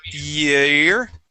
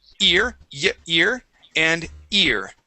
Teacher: so year is a diphthong. Ear is a monophthong.